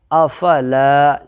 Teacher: से पहले लाम के ऊपर ज़बर है, इसलिए अलिफ मद्दा होगा, अलिफ मद्दा को एक अलिफ के बराबर खींच करके अदा किए करेंगे